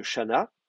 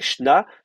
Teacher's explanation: Donc c'est shna, donc vous avez le même terme qu'en hébreu, bon ça c'est pas très compliqué, hein. Shana en hébreu va donner shna en araméen, la préformante va tomber, la prétonique va tomber.